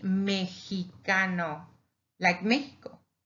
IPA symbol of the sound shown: j